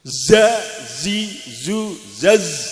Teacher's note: Jadi ini makhrajnya ujungnya lidah tidak nempel tapi mendekat gigi atas dan bawah ya. Hurufnya adalah za, karena dihimpit oleh gigi maka mengeluarkan sifat sofir, mendesis yang kuat ya.